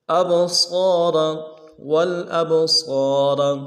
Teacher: اب صاد کو موٹا ادا کرنا ہے